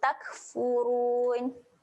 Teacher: Kaf ketika mati, sifat dia ada keluar angin. Tak, bagi keluar angin sikit.